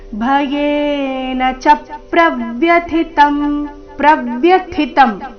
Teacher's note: ಪ್ರವ್ಯಥಿತಂ ಥಿ ಮಹಾಪ್ರಾಣ ಮುಂದಿನತ ಅಲ್ಪಪ್ರಾಣ · ಚ ಮತ್ತೆ ಪ್ರ ಈ ಎರಡು ಅಕ್ಷರಗಳ ಮೇಲೆ ಆಘಾತ ಬರಬೇಕು